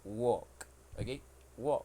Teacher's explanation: we pronounce this verb it is not W with L because in that word the L Sound is silent